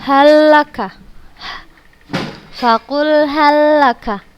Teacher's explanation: Lam sukun bertemu dengan huruf lam yang berharokat, maka kita bacanya langsung ke lam yang berharokat dan tanpa gunnah. Kita membacanya tidak dengan gunnah. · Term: Idgham mutamatsilain